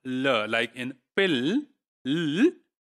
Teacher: this is the l sound produced while adding the secondary articulatory gesture of velarization. And for velarization, we can use both of the tilde and this small, velarization symbol. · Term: dark l